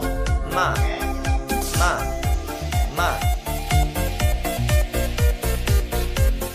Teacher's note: Lidah di bawah, istifal, terbuka antara lidah dan langit-langit atas, infitah, keluarnya lancar atau ringan, idlaq. Berdengung, gunnah